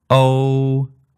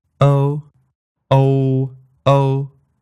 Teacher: Cantonese goes all the way up to oo at the end, where English kind of peters out a bit and only goes up to O